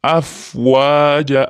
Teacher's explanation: Alloh lafzi shu kasradan keyin kelayotganligi uchun mana o'rtadagi tashdidli lam a ga o'qilyapti, ingichka bo'lib, ya'ni dinillahi afwaja, shunga e'tibor beramiz. Fayam vavam lab harfi, ya'ni mahraji chiqadigan joy lab hisoblanadi. Ikkalasi aralashib afwaja bo'lib ketmasin.